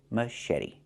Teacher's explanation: The T makes a fast D